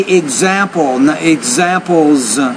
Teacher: you want to make sure you put a plural s on that word example and pronounce it as a z